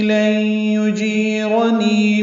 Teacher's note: لن یجیرنی میں نون ساکن کے بعد یا کی وجہ سے ادغام ہوا ہے، ادغام ناقص ہے، غنہ ہوگا۔ یجیرنی جیر یا مدہ ہے، 2 حرکات لمبا کریں گے، را پل پڑھیں گے، نی بھی یا مدہ ہے۔